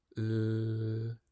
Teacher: Mewn drych, dylai nhw allu gweld bod blaen y tafod tu ôl i'r dannedd uchaf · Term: L hir